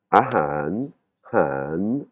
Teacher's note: c'est l'intonation qui monte et qui descend